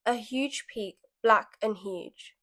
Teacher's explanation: the harsh plosive alliteration of black and peak show how suddenly intimidating nature becomes